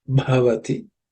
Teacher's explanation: There are no aspirated words except bhavati. The bha is the fourth letter in the pa varga, so it has to be aspirated with some extra air.